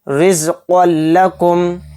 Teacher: تنوین کے بعد لام آ رہا ہے تو اس میں ادغام بلا غنہ کا قاعدہ ہو رہا ہے، اور یہاں پر ہم بغیر غنہ کے اس کو جلد پڑھیں گے، یعنی اس میں غنہ نہیں کریں گے۔